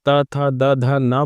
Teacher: इसी तरह से जब आप त थ, द, ध, न बोलेंगे तो आप दांत पे जो है आपकी जीभ का अग्र भाग छुएगा तो वो दंत व्यंजन कहलाएंगे।